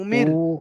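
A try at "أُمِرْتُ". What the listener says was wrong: উ টান হবে না, তা পেশ তু,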